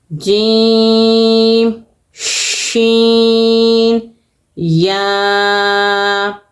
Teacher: जबान के दरमियान और ऊपर तालू के दरमियान से तीनों वर्ड्स अदा होंगे